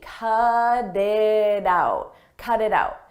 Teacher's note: when a t comes between vowels we change that to a d d a very soft D cut it out cut it out · You'll notice we have T's in between vowels. In American English, when a T comes between vowels, we change that to a d, a very soft D.